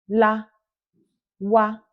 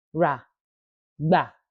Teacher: àwọn ọ̀rọ̀ méjì àkọ́kọ́, a pè wọ́n pẹ̀lú ohùn òkè